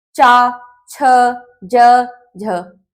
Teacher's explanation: च वर्ग, च छ ज न, तालु, इसमें जो हमारी जीभ होती है वो मुख के ऊपरी भाग पर स्पर्श करती है, तालु पर